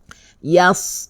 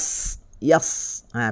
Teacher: yas masih bunyi, desiran masih bunyi ya, sebab dia adalah huruf desir.